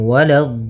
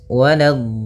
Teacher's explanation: Hati-hati di sini. Walado. Lanya jangan sampai tebal. Jangan walad tapi lanya tipis.